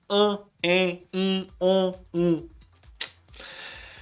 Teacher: É porque às vezes esse EN, esse AN, esse AM, OM, IN, eles vão apenas dar a nasalidade.